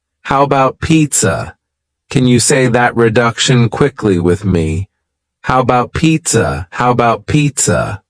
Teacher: The first A in the word about is gone. It's just missing.